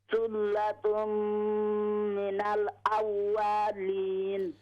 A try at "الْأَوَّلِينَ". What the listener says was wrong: Yeah, we don't stretch wow. أولين.